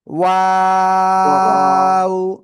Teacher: সবাই খেয়াল করেন। এই যে দুই ঠোঁট গোল হবে শুরুতে, মাঝখানে দুই দিকে প্রসারিত হবে, শেষে এসে আবার গোল হবে।